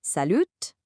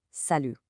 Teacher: You see that T on the end? We completely ignore it.